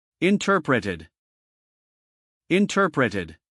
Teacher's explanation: Here T does not change to D because it is inside the stressed syllable.